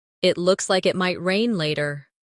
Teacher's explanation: Notice how the intonation rises at the end, making it sound like a friendly remark.